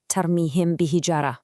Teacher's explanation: that meme sound in tarmihem is followed right by a ba. That's our heads up that a merge is coming.